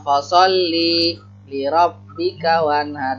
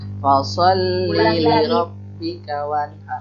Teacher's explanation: kalau bisa jangan li-nya jangan pendek. Jangan fasolli li rabbik, li-nya jangan berhenti. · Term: disambung